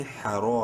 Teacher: را کو منہ بھر کے پڑھتے ہوئے کلک کے برابر لمبا کریں گے الف مدہ کی وجہ سے